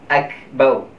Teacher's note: Maknanya mulut tu seakan-akan muncung sedikit supaya ditebalkan huruf ra. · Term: ra tebal